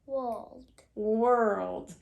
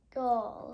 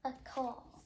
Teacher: we call those a vocalic R because it has a vowel and the R put together